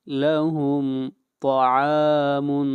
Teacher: طا کو موٹا پڑھیں گے، طا حروف استعلاء میں سے ہے